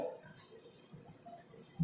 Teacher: बै बोलते वक्त दोनों ओष्ठ का मिलना बहुत जरूरी है